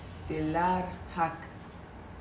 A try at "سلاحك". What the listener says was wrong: There is no R in the middle. سلاحك.